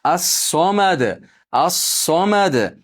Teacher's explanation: Dada ham to'xtaganligimiz uchun qalqala qilamiz.